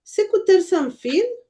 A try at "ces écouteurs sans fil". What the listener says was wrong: Regarde, n'oublie pas, de ne pas prononcer le E final. Oui, ces écouteurs sans fil.